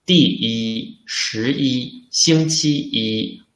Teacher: When we use it alone or in a number, we should use the first tone.